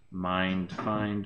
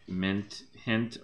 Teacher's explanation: presents with a long I and the D versus the T the voiced versus unvoiced final consonant